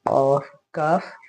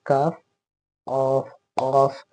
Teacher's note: यानी जो जबान है उसका जो जड़ है, जबान की जो जड़ है वो तालू के अंदर नर्म हिस्से में सटेगी